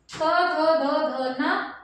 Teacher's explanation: दंते से मतलब हमारी दांतों की सहायता से